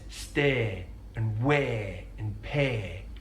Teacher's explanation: he elongates the diphthong A. So he says stay and wear and pay, rather than stay, weigh, and pay.